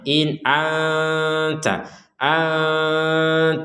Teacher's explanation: nun sukun bertemu Ta ini kita baca dengan samar ya